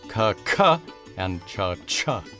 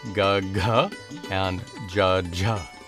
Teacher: The first pair is hard or unvoiced, like ka, ka, and cha, cha. The second pair is soft or voiced